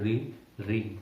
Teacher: तो मूर्धा में हमारा कौन सा होता है, री, री को अगर आप बोलेंगे री री, ठीक है, तो आपका जिह्वा आपके मूर्धा को छूती है